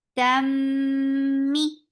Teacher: Tam, open your jaws for fatha. And this is idgham with gunna. So you're keeping the sound in your nose for a longer time. Tammi, for kasra give e sound.